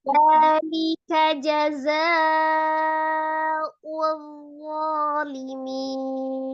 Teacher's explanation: Ada huruf zal, ujung lidah ada di ujung gigi seri bagian atas. Ujung lidahnya keluar ya, zalnya.